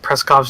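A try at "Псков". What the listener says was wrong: Pskov? There's no R in that word. You kept saying Preskov. Yeah, you're saying it again with an R. I'm hearing an R.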